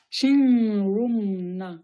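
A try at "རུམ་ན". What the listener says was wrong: Attention que ça ne devienne pas un chin. Dans ce genre de cas, dans ce genre de cas, l'épellation, hein, il n'y a que l'épellation qui nous sauve.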